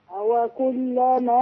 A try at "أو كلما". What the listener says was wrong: مش أوى أوى أوى كلما